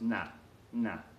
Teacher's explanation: colloquial Spanish you up in here now that pronounced nah nah they just kind of make the a a little bit longer and they eat the D